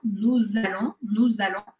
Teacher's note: eu grudo esse S do nous com o A do allons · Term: liaison